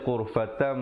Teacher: Asalnya ghurfatan, tapi di situ kena baca ghurfatam dengan mim yang nipis, ya. Bibir itu sekadar bersentuhan saja, hukum iqlab. Jangan lupa 2 harakat.